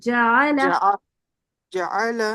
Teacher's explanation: जा जरा लंबा हो रहा है छोटा रखें इसको